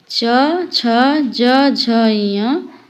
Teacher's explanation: तलव्य ध्वनियां वे ध्वनियां होती हैं जिनके उच्चारण में जीभ के पिछले भाग को तालु से संघर्ष करना पड़ता है।